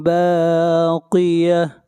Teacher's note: جب اس کے اوپر وقف کریں گے تو یہ ہا بن جائے گا